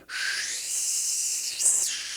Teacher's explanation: His surname is Xi, which it starts with X, and the X sound in Chinese, to give you a very basic explanation of this sound, it's like halfway between a sh and a s.